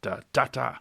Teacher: But there's lots of others that you can find in rap where you get a Bacchic rhythm, which is basically rising, but it ends with like 2 big accents. So it's like da da da, and a sequence of those has quite an effect.